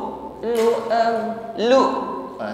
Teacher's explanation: suara tertahan ketika mengucapkan Hamzah sukun am karena sifatnya syidah makhrajnya tertutup dengan sempurna sehingga bunyi huruf